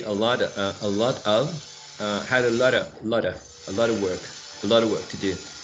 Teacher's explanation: You can link all that in only one word, like a lot of.